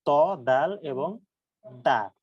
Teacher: ত, দাল এবং তা বর্ণের মাখরাজ হচ্ছে জিহ্বার আগা সামনের উপরের 2 দাঁতের আগার সাথে লাগিয়ে উচ্চারিত হবে, ও সরি গোড়ার সাথে লাগিয়ে, ত, দাল এবং তা।